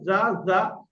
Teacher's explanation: আর ইজা, আচ্ছা আচ্ছা জালটা কোথা থেকে উচ্চারণ হয়? জা জা, জিভের আগা উপরের দাঁতের আগায়, ইজা ইজা, জা জা, জালের উচ্চারণ হালকা হবে একদম।